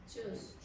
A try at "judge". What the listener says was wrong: Now, what you're doing is jush. Do you hear that? Okay, so do it again.